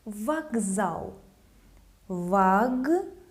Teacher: The voiced Z made the letter K have some voice to sound as its voiced counterpart.